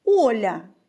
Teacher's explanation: після приголосного літера Я позначає один звук а та м'якість попереднього приголосного